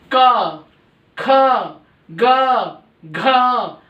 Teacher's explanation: तो ये कै वर्ग के जो है वो कंठ से हैं, कंठ्य, इसलिए इनको कंठ्य बोला जाता है क्योंकि कंठ से गले के यहां से ध्वनि निकलती है।